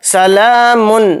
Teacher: لام کے اوپر کھڑا زبر ہے، لام کو تھوڑا کھینچ کر پڑھیں گے